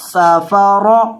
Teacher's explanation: اب اگلا لفظ دیکھیں، سین زبر سا، سین کے اندر آپ نے سٹی پیدا کرنی ہے، فا زبر فا، صافا صافا، را زبر را، سافارا، را کو پر کریں کیونکہ را کے اوپر زبر ہے